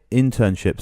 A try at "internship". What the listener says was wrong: Internship. Internship. Internship. How did you say it?